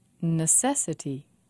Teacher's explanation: Four syllables, and the stress is on se.